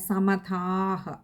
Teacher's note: അവിടെ ദീർഘവും ഉണ്ട് വിസർഗ്ഗവും ഉണ്ട് പകുതി ഹകാരത്തിൽ നിർത്തുക പിന്നെ അടുത്തത് സ്തോത്രോഗായതസ്തസ്യകാമധിയോപി അവിടെ കഴിയുന്നതും അത്രയും ചേർത്ത് വായിക്കുക അവിടെ വായിക്കുമ്പോൾ സ്തോത്ര